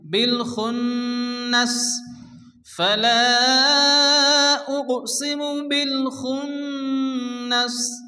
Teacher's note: নুনের উপরে তাসদীদ গুন্না ওয়াজিব